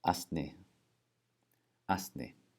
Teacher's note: when you see an S and an N written next to each other, you're going to put in a tiny little T between them. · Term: T insertion